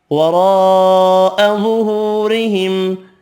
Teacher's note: را یہاں زبر کی وجہ سے پر پڑھیں گے